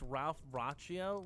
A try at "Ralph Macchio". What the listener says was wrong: It sounded like you said a Ralph Raccio. Ratchet. Ratchet Ralph.